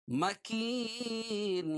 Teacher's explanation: یا ساکن سے پہلے زیر ہو تو یا مدہ، اس کو ایک الف کے برابر کھینچ کے پڑھتے ہیں